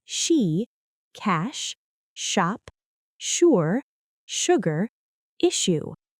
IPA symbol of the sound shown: ʃ